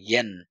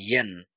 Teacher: আমরা বলবো ইয়ান। জিহ্বার মধ্যখান থেকে বলবো।